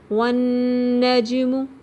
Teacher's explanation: والنجم، واو ہونٹوں کی گولائی سے ادا کریں گے، نون مشدد ہے یہاں غنہ کریں گے، غنہ کا مطلب ہے تھوڑی دیر آواز کو ناک میں ٹھہرانا. جیم پہ قلقلہ ہوگا، 5 حروف جن پہ جب بھی جزم آ جائے تو انہیں ہلا کے تھوڑا سا شیک کر کے پڑھتے ہیں.